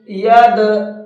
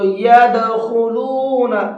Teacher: يَدْخُلُونَ، دال کے اندر پوائنٹ کو سمجھیے گا، یہ دال ہے، دال ساکن ہوتا ہے، اس کے اندر قلقلہ کر کے پڑھتے ہیں، ہلکا سا آواز کو ڈبل کر کے پڑھتے ہیں